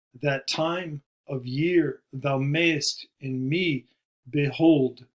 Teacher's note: five feet each with a stress on the second syllable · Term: iambic